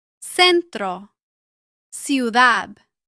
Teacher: Before E or I, it usually sounds like S in most of Latin America.